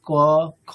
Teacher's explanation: আমাদের ক বর্গের উচ্চারণ স্থান কি কণ্ঠ ঠিক আছে একেবারে ভিতরের দিক থেকে উচ্চারিত হয় মানে আমাদের কি বলবো মানে গলার উপরের দিকে গলার শেষ মুখের